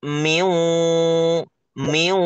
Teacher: Kita baca ke wau, baca juga gunah, dengung. Jadi dibikin sengau, Miu.